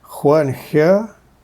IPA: xʷ and xʲ